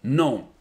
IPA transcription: nɔ̃